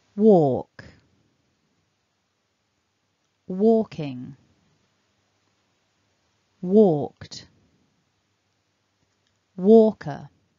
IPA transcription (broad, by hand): wɔːk ˈwɔː.kɪŋ wɔːkt ˈwɔː.kəʳ